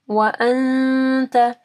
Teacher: نون ساکن کے بعد تا ہے، ٹھیک ہے، یہاں پہ اخفا غنہ ہوگا